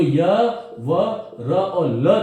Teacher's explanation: य, व, र और ल जो है ये चारों की चारों ध्वनियां संघर्षहीन है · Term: संघर्षहीन ध्वनियां